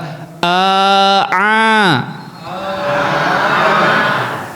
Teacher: A jangan dari hidung. Kalau dari hidung jadi nga. · Ya, itu kekeliruannya karena keluarnya dari hidung ya. A itu keluar dari tengah tenggorokan. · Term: ain